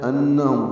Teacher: ہم میں میم ساکن کے بعد میم آنے کی وجہ سے ادغام ہے ، یہ ادغام مثلین ہے یا ادغام شفوی ہے، غنہ ہوگا،